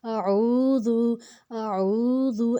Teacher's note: عین کو ہم نے حلق سے نکالنا ہے، اور جو الف کے اوپر زبر ہے اس کو ہم نے اس کو ہم نے حلق سے نہیں نکالنا، مطلب زبان کو زور نہیں دینا۔